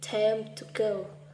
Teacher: the grammatical words him and to are unstressed and have a weak form when pronounced inside sentences